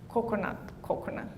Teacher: in Palau people pronounce the K further back so it sounds like coconut would sound something like coconut coconut